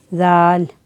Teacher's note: ज़ाल इसको बहुत नरमी से पढ़ना होता है। ज़बान की नोक ऊपर वाले दो दांतों का सिरा या अंदरूनी किनारा